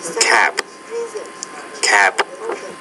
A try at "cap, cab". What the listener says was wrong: No, it's cap, cab. So I think you should also practice lesson number 19, particularly make sure when you put the B at the end or the P at the end, you change the duration of the vowel which precedes those sounds.